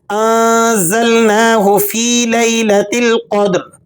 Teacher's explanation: नून साकिन है और आगे ज़ा है, तो यहाँ आपने इख्फ़ा अदा करना है।